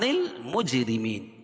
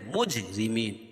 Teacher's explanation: جیم پر قلقلہ کریں گے کیونکہ یہ حروف قلقلہ کے 5 حرفوں میں سے ہے. حروف قلقلہ 5 ہیں جن کا مجموعہ ہے قطب جد، قاف طا با جیم اور دال، اور را باریک ہوگی کیونکہ را کے نیچے زیر ہے، اور یا ساکن سے پہلے میم کے نیچے زیر ہے تو یا مدہ اس کو ایک الف کے برابر کھینچ کے پڑھیں گے.